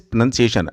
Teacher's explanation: it would be better if you could drop the R sound